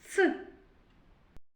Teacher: Ми його не можемо проспівати чи протягнути. Нам заважають зубки і на звуковій схемі позначаємо однією рисочкою. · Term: звук ц